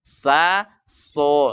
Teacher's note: Sama makhrajnya sin dengan sod. Sama-sama ujung lidah dengan gigi seri bawah. Namun sa itu istifal, dibaca tipis.